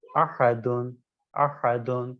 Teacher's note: احدن کے اندر حرف دال متحرک ہے، جب آپ کہیں گے احد تو اب یہ آپ کے ساکن ہو گیا، لہذا یہ کیا ہے، یہ آپ کے قلقلہ ہو جائے گا۔